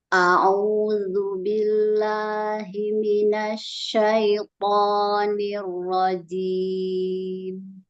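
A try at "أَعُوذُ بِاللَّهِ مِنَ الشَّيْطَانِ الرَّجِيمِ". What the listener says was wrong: Mimnya jangan hilang. Nirrojim. Kasih bainiyah mimnya ya di akhir ya.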